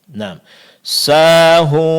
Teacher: mad alif setelah huruf sin. Ini yang dipanjangkan dua harakat